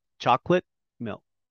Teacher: I don't make the T sound. I cut it, I shape it, but I don't say it.